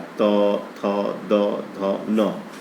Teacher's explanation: तो त, थ, द, ध, न ये दंत होता है।